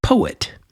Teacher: And then the opposite of an iamb iamb is a trochee and you can think of a word like poet. So, you have the emphasis on the po and a de-emphasis, you could say, or a falling away of the et, poet. Almost like et is an afterthought.